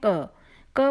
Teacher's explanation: कोई भी, जैसे हम क को बोल कर देखते हैं। क बोलते समय क तो थोड़ा सा सुनाई दिया, पर अ का स्वर ज़्यादा सुनाई दिया।